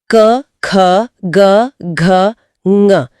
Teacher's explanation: कंठ्य व्यंजन यानी क वर्ग क, ख, ग, घ, ञ गले से उच्चारित होते हैं।